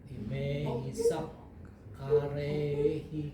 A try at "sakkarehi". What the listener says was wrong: Saka harus panjang.